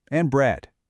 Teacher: when you get to the very last thing on the list, you switch to that falling tone and bread. That drop is the signal.